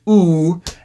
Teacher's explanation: that's the highest backest roundest vowel you can possibly produce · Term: cardinal vowel eight